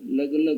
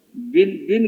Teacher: लग लग कहो, ये होंठ आपस में मिलेंगे नहीं, करके देखो, लग बोलो बिल्कुल मिलेंगे नहीं है। और बिन कहो, देखो करके, बिन कहोगे ना ये फट मिल जाएंगे।